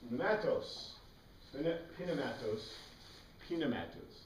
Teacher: The Greeks pronounce the P, which we don't, right?